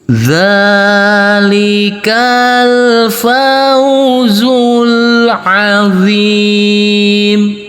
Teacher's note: Untuk yang 6 harokat kita kasih irama nada turun.